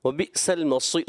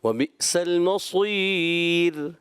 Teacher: صاد موٹا رکھنا ہے, را کو باریک کرنا ہے